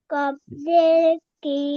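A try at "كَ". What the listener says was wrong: কফ জবর ক, জের না তো, ভালো করে দেখে বলেন। তাহলে কি হবে? একসাথে বাড়ি ক। বারো ক কেন? বাড়ি ক।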